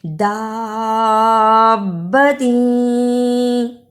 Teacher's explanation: با پر شد ہے، اس لیے لمبا بھی کرنا ہے اور شد کی وجہ سے با سے ملانا بھی ہے